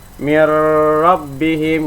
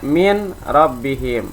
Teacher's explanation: suara nun sukun atau tanwin tidak terdengar, hilang karena dimasukkan ke dalam huruf ra. Dan kalimat mir rabbihim pada mulanya dibaca min rabbihim menjadi mir rabbihim. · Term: idgham bila guna